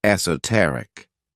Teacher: The next word, which is another one of my favorite adjectives, is esoteric. This word has 4 syllables, with the stress on that third syllable